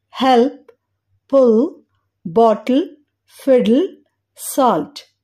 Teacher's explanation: dark L ని పలికేటప్పుడు tip of tongue అంటే నాలుక చివరి భాగం బోనీ రిడ్జ్ అంటే పై పండ్ల వెనుక గట్టి భాగంపై పెట్టడానికి లిఫ్ట్ చేయబడతది కానీ టచ్ అవ్వదు ఈ క్రమంలో అంటే నాలుక చివరి భాగం నోటిలో గాలిలో వేలాడుతున్నట్లు ఉంటుంది పిక్చర్